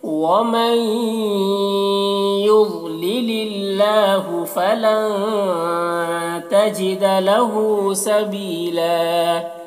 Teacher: فلن کے نون میں اخفا ہو رہا، نون کے آواز کو ناک میں چھپا کر پڑھیں گے · سبیلا یا مدہ ہے، ایک الف کے برابر کھینچیں گے اور یہاں پر وقف کریں گے تو ایک زبر کے ساتھ الف پڑھیں گے